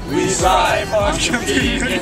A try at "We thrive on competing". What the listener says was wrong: It's not strive, it's thrive. It's thrive. We thrive.